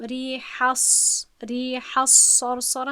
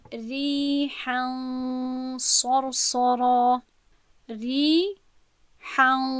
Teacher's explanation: نه، این شد ادغام که در اینجا قاعده ادغام به وقوع نمی آید، بلکه من این رو میگویم ریحن صرصره، ریحن. خب یعنی که همین نونی که باید من تلفظ میکردم به دماغ خود میکشم و در اینجا غنه رو برای 2 حرکت وقت میدهم